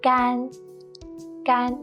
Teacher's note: it's the first flat and long tone